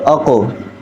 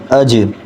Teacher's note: ان کو ذرا آواز دگنی کر کے جھٹکا دے کے پڑھتے ہیں